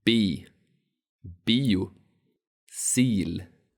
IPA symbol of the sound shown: iː